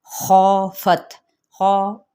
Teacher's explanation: خافت، خا پر کرتے ہوئے الف اس کے تابع ہو جائے گا تو خا پڑھا جائے گا، خا یہ غلط طریقہ ہے۔